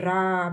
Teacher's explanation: प्रकंपित मतलब कि कंपन होता है। जब रा बोलोगे तो र यहां पे गले के पास में कंपन होता है।